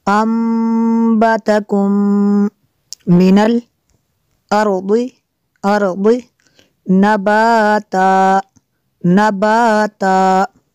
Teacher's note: میم ساکن کے بعد دوسری میم ہے، یہاں پہ ادغام شفی ہوگا ، اس لیے یہاں پہ بھی غنہ کریں گے، انبتکم من